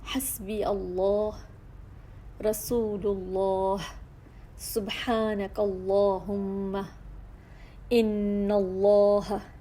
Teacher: یعنی کہ اللہ سبحانہ تعالیٰ کے اسم مبارک میں یہ لام پر پڑھا جا رہا ہے، جس کی وجہ سے اللہ سبحانہ تعالیٰ کا جو اسم مبارک ہے تو وہ ہیوی پڑھا جا رہا ہے تفخیم میں